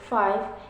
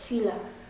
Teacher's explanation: Consonant sounds which are produced by contacting the lower lip and upper teeth, as in sound fa in the word five and va in the word villa. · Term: labiodental sounds